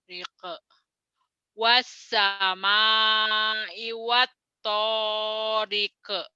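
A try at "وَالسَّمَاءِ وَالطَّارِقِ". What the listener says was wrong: Jangan rike, riq. Jangan rike. Kalau rike berarti ada e-nya. Wassama'i wattariq. Riq. Riq. Jangan rike, riq. Riq.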